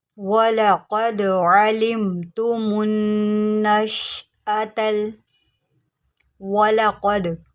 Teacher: قاف کو موٹا کریں، دال کے اوپر قلقلہ کریں